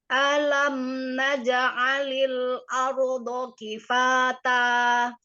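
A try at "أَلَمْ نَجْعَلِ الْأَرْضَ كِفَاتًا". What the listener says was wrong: A-nya hamzahnya ditipiskan dulu sebelum ro-nya tebal. Alam naj'alil arda kifata. Ar. Baru ro-nya tafkhim. Ardo.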